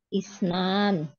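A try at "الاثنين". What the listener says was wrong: Isnaini. Isnaini ya, laisa isnan. Isnain.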